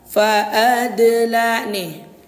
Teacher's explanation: Lalu yang kedua, contoh yang kedua nih pamannya fa'adla. Ini huruf dal sukun berada di tengah kalimah. Hukumnya qalqalah ya, qalqalah sughra. Huruf dal dibaca memantul.